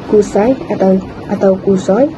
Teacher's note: Perkataan Kusoi mengandungi AI yang gabungan vokal O dan I yang dilepaskan sebagai satu unit bunyi